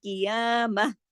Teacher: جب ہم گول تا پہ رکتے ہیں، عارضی سکون کرتے ہیں، تو یہ جو تا ہے یہ ہا میں بدل جاتا ہے